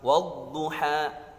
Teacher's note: Jadi di cara bacanya itu didengungkan, dimasukkan suara al ke huruf setelahnya. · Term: idgham syamsiyah